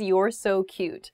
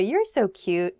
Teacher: It's typically said with downward intonation. People say, you're so cute, kind of going down like that.